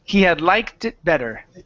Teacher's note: if it is hard to pronounce that T after the K, remove it, take it off, but put it at the beginning of the next word. So now, instead of saying liked it, we're going to say like tit.